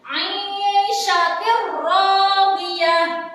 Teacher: jika ada tanwin bertemu dengan ro, maka cara bacanya adalah dengan cara memasukkan tanpa mendengung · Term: idgham bila guna